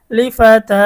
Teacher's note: খারা জবরের কারণে এক আলিফ টান হবে।